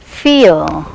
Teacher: The glide is in the direction of central unrounded vowel just below the half open position.